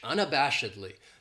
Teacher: This adverb has 5 syllables, and the stress is on that third syllable, that bash, unabashedly. That second syllable has that schwa, that sound, unabashedly.